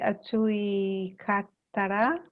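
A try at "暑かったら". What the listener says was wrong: Sorry, not atsui katara, atsu katara. We chop off, we take the E off the end of atsui, so we don't have E at the end, just atsukatara.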